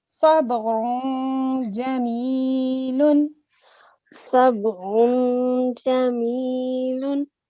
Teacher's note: Jim is one of harfe ikhfa, so you have to create a concealed nasal sound when you recite this tanween or dammatan.